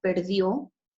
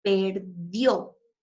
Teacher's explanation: termina en una vocal y se hace mayor fuerza de voz en esta última sílaba